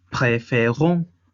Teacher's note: Aquí, como la última sílaba on es tónica, ya no se le carga el peso a la sílaba faire. Es por ello que se regresa la tilde a ser aguda. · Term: sílaba tónica